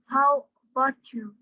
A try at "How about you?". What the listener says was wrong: Ya, jangan di-split ya, jangan dipatah-patahkan cara ngomongnya. How about you? Ya, sama dengan Anda mengatakan how are you dengan how are you. Kalau Anda mengatakan how are you masih di-split begitu, Anda masih levelnya tingkat SMP. How are you?